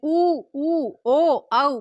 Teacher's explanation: जो हमारे होठ हैं वो गोल आकृति ले ले या गोलाकार हो जाते हैं उच्चारण के टाइम पे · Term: व्रतमुखी